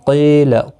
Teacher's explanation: ایک الف کی مقدار کے برابر کھینچ کر پڑھیں گے قیل یا مدہ ہے قاف مستعلیہ ہے پر پڑھا جائے گا